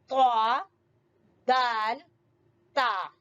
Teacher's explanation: زبان کی نوک جو ہے وہ سامنے والے 2 دانتوں کے جڑ سے ٹکرا رہی ہے